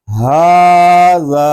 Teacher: کھڑے زبر کو ہم الف مدہ کی مقدار تک کھینچ کر پڑھیں گے، یعنی ایک الف تک، کیونکہ کھڑا زبر جو ہے یہ الف مدہ کے قائم مقام ہے۔